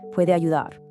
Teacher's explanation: Listen to how those words flow together naturally. You link the E at the end of puede directly into the A of ayudar.